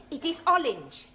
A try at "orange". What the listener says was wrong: You really must work at those R sounds. Try saying, round the rugged rock, the ragged rascal ran.